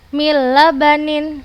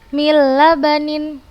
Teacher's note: Sama juga seperti yang ini nun sukun setelahnya lam bertasydid Hai jadi kita hilangkan nun sukun nya langsung kita baca ke dalamnya yang bertasydid Mila Banin langsung kita